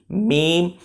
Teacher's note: اور لام ہم نے پڑھا تھا کہ ہم لا جو ہے نا وہ منہ سے ادا کریں گے، اور میم جو ہے لام تو پھر میم کی جب ہم میم پہ آئیں گے تو یہ ناک میں چلی جائے گی۔ میم ہم نے ایسے دونوں ہونٹوں کے خشک حصوں سے ادا کی تھی میم، اور نون جو ہے وہ ہم نے زبان کی جڑ اور تالو کے سرے سے ادا کی تھی لیکن اس کی آواز ناک سے آتی ہے۔